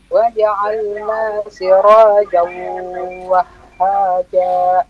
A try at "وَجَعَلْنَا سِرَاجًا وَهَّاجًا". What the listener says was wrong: Ya, wahha ya. Tasdidnya dikuatkan dulu, lebih kuat lagi.